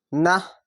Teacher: খেয়াল রাখবেন গোল তা থাকলে এই ত এর জায়গায় থামতে গেলে গোল তা থাকলে থামতে গেলে হা হয়ে যায়